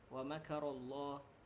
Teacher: ra tu makaru, ra tebal lah. Ra tafkhim.